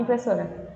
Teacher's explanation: Por mais que você fale rápido, a sílaba so, ela soa um pouquinho mais demorada, né? Ela se demora mais, ela se prolonga mais, porque ela é a sílaba tônica, tá bom?